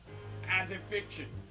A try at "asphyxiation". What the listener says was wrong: There's more parts. You're skipping some. Asphyxiation.